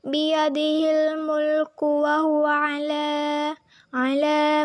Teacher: Biyadihil mulku wa huwa ala merupakan hukum bacaan mad tabi'i atau mad asli karena huruf lam bertemu dengan alif yang bersembunyi. Baris vertikal di atas menunjukkan adanya alif yang bersembunyi. Cara membacanya dibaca panjangnya 2 harokat.